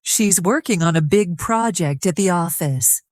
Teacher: Stress working big project and office. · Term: rhythm